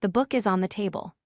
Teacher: We stress table because it tells us where the book is.